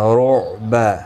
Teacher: عین ساکن ہے بیچ میں، اس کو ہلانا نہیں